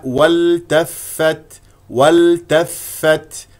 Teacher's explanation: فاء ساكنه ثم فاء مفتوحه اخرج معها هواء همس